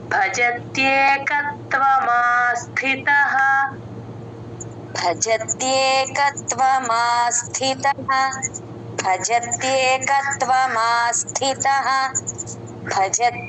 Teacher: కత్వ అని ప్లేన్ గా చెప్పేస్తూ ఉంటారు అలా చెప్పకూడదు క కి త ని జాయిన్ చేసుకొనే చెప్పాలి ఎక్కడ సంయుక్తాక్షరం వచ్చినా సరే ముంద అక్షరానికి కలుపుకొని చెప్తేనే కరెక్ట్ గా వినబడుతుంది.